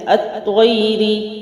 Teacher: را باریک ہے کیونکہ زیر ہے